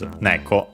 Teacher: The actual name of cats in Japanese is neko, accent on the first syllable.